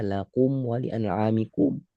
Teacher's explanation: Kasih percikan angin pada kaf. Kalau enggak, jadi seperti huruf K Indonesia.